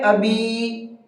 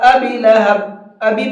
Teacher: دوسرا پوائنٹ ہے ابی، با کو کھینچ کر کے پڑھیں گے، اس لیے کہ یہاں پر حروف مدہ ہے یائے مدہ، یائے مدہ کو کھینچ کر کے پڑھا جاتا ہے، تو یہاں اس کو بھی کھینچ کر کے پڑھیں گے ابی۔